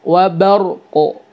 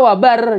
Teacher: Keluarkan sifat qalqalahnya dari qaf ya